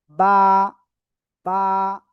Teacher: বা অক্ষর দুই ঠোটের ভেজা অংশ থেকে আলিফটা নিয়ে উচ্চারণ করতে হয়।